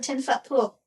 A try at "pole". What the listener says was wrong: Pool? You have a 10-foot pool? Yeah, you said pool.